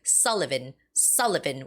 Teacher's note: So it's Sullivan with the first syllable stress